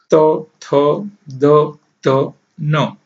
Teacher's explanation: આ વ્યંજનો દંત્ય તરીકે ઓળખવામાં આવે છે બોલતા જીભ દાંતને સ્પર્શ કરે છે